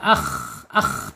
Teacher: Tenggorokannya ada di atas. Ya, mengorok sedikit. Ngorok sedikit suaranya k orang tidur ya.